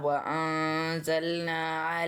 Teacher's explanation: نون ساکن کے بعد حرف زا آ گیا ہے تو ہم نے نون کی آواز کو ناک میں چھپا کے پڑھنا ہے